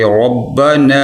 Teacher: نون کو تھوڑا سا لمبا کریں گے، کھینچیں گے کیونکہ اس کے آگے الف ہے